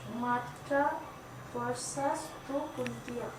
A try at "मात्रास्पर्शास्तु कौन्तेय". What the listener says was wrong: एस के ऊपर इश आता है, स्पर्शास्तु नहीं है, स्पर्शास्तु। श स्पर्शास्तु, कुंतेय नहीं है, आओ कौन्तेय।